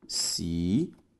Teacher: A sílaba tônica, perceba, é a penúltima. Logo é uma palavra paroxítona.